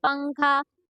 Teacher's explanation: نون کی آواز کو ناک میں چھپا کر پڑھیں گے، مطلب نون کو ظاہر نہیں کریں گے ہم لوگ جب نون کو ادا کرتے ہیں تو ہم لوگ کی جو زبان رہتی ہے اس کی نوک، زبان کی نوک تالو سے لگتی ہے تو نون ادا ہوتا ہے۔